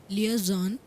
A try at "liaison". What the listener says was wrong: zon नहीं, liaison,